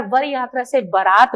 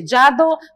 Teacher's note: वचन का व बकरी के ब में बदल जाता है